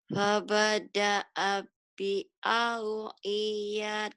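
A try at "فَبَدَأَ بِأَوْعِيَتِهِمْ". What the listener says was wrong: I-nya pendek. Ulang. Enggak ada yang panjang. Fabada'a bi awiyatihim.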